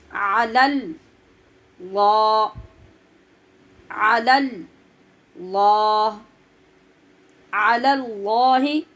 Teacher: یہ پہلا علی کا لام باریک اور لفظ اللہ کا لام پر ہے.